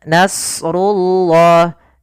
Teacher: di sini pada lafal nasrullah huruf shadnya kita baca dengan tebal, karena huruf shad ada salah satu sifatnya itbaq dan isti'la, yaitu itbaq melekatnya lidah kita dengan langit-langit atas, dan isti'la adalah pangkal kita terangkat.